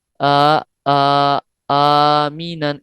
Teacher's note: 2 حرکات، یعنی آ آ آمینن اتنا لمبا کرنا ہے۔